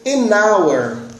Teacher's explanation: som do H, ele não é pronunciado. Então, eu não digo a hour, eu vou dizer an hour, ok?